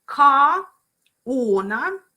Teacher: So for example, if I say car owner, and in one phrase, car owner, right? So R will appear between words, and that's how intrusion works